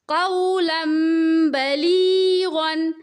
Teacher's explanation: قولن کی جگہ پڑھیں گے قولم